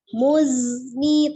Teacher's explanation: itu zai sifatnya asofir ya, ada desisnya. Jadi jangan langsung muzni seperti itu, tapi muzni, tapi hati-hati jangan dipantulkan ya.